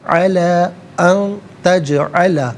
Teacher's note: علا ان تجعل, نون ساکن اس کے بعد تا حرف اخفا ہے تو نون ساکن کو اخفا کے ساتھ پڑھیں گے. ناک میں آواز لے جا کر گنگنانا اسے اخفا کہتے ہیں. تجعل جیم ساکن ہے, یہاں قلقلہ ہوگا.